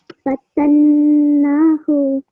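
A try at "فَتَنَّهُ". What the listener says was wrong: Very nice, very nice. Just slightly longer on the na, okay?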